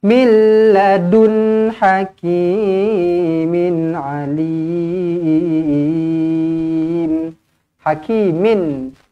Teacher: Tanwin selari bertemu ain, izhar halki dibaca dengan jelas dan terang.